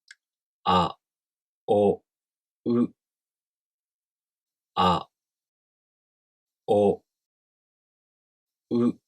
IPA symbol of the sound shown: a o ɯ